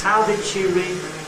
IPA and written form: ˈhaʊ dɪd ʃi rɪ (how did she re)